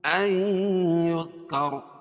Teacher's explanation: یہاں ادغام مع الغنہ ہوگا کیونکہ نون ساکن کے بعد ادغام مع الغنہ کے 4 حرفوں میں سے یا آ جائے گی تو یہاں غنہ کر کے پڑھیں گے.